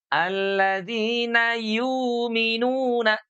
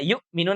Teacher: Kalau dalam riwayat yang lain itu ada yang diibdal. Jadi huruf hamzahnya ini diganti dengan mad.